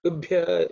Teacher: the bha is fourth letter in the pa varga, so it has to be aspirated